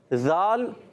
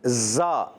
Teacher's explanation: یہ ذال جو ہے بغیر سیٹی والا ہے، زا جو یہ سیٹی والا ہے۔